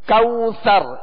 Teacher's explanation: واو لین کا قاعدہ ہے، لہذا نرمی کے ساتھ معروف طریقے سے ادا کریں گے. اور را کو آخر میں ہم ساکن کریں گے وقت کی صورت میں.